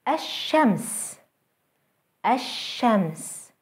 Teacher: Having a sun letter after the definite L will result in two things. Losing the L sound in the L and doubling the initial sun letter itself. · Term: sun letters